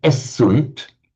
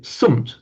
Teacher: So in Latin, they don't say essunt, they just say sunt. The first vowel drops off.